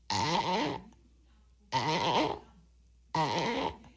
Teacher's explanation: So your gut reaction would be, ah. That means the pitch or the tone is you go up briefly and you go down briefly, and then you go up again very briefly. So it's ah, ah, ah. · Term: on or over the edge